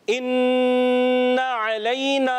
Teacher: इज़ा तरद्दा, इन्ना, नून मुशद्दद है प्यारे बच्चों, याद कर लें मदनी चैनल के नाज़रीन और प्यारे बच्चों, जब कभी नून पर तशदीद आए या मीम पर तशदीद आए एक अलिफ का गुन्ना अदा करेंगे · हमज़ा को आइन ऐसे ना है, क्लियर करनी है, हमज़ा को वाज़े करेंगे तहकीक के साथ